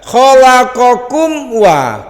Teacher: ada mim mati ketemu wau bacanya terang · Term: syafawi